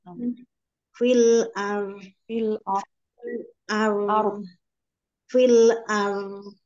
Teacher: udaranya seperti terkumpul di dalam rongga mulut rnya tebal